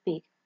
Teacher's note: We have P, that is voiceless, bilabial, stop